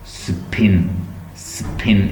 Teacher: इसमें non aspirated है, puff up नहीं हो रही, एकदम हवा निकल नहीं रही